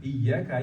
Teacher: perlu aksentuasi di ya tasdidnya. Jadi iya, sedikit tekanan ya, jangan berlebihan, jangan sampai ya putus, nggak boleh putus.